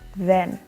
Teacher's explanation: The Th sound is called voiced dental fricatives, for example in the word then.